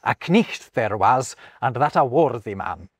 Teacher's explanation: in Geoffrey Chaucer's day, the K was being proudly enunciated